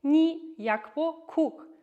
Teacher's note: the ni, listen, that sound is a high tone